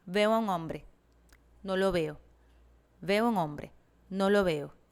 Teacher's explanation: syllable timing, where each syllable is given roughly equal time and emphasis, resulting in a more consistent and even rhythm throughout the speech